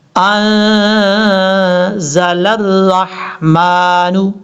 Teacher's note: وما انزل الرحمن، نون کے بعد جو زا ہے یہ زا سیٹی کے ساتھ پڑھا جائے گا اور لام کو را کے ساتھ کنیکٹ کریں گے، بیچ میں حمزہ اور لام کو چھوڑ دیں گے